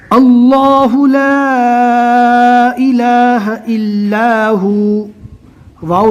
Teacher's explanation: 'अल-हय्युल-क़य्यूम' में, क़फ़ का पाठ मुँह भरकर करना चाहिए।